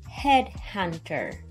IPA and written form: ˈhedˌhʌn.t̬ɚ (Headhunter)